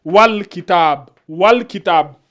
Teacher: dès que vous voyez ce symbole là ça veut dire que la lettre qui suit là c'est une lettre lunaire donc on prononce bien le al